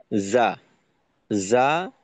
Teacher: আচ্ছা, এই জিমের ক্ষেত্রে বাতাস বের হওয়ার পিছনে গুরুত্বপূর্ণ একটা ভূমিকা পালন করে হলো, আমরা জিমটাকে জিহ্বার অগ্রভাগ থেকে আদায় করি, যে কারণে বাতাস বের হওয়ার প্রবণতাটা বেশি থাকে